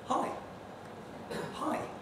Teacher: in more casual circumstances you fall but only to the sort of mid-level